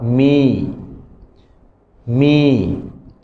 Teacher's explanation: Bibir atas dan bibir bawah dia rapat. Okey rapat menghasilkan bunyi ma. · secara teknikalnya bibir atas dan bibir bawah melekat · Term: huruf mim